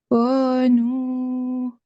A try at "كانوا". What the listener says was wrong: What letter is this one? No, it's a tarqiq letter. It's kaf. It's not qaf. Kaf. So can so it would be a slight There will be no thick sound. So kanu.